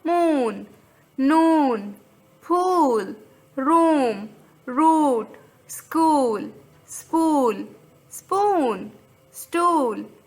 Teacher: now the time of the long vowel is ooh like in the word cool